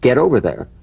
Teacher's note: the final T when it's followed by a word beginning with a vowel again it becomes in effect a medial T there's a vowel on both sides of it so it gets